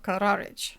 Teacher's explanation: it doesn't sound like that would be a cha sound and he emphasize the middle syllable